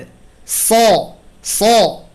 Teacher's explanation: সাদ হরফ ভারী আওয়াজে উচ্চারিত হরফ, এবং এই হরফেও সফির আছে, এবং এই হরফেও বাতাস আছে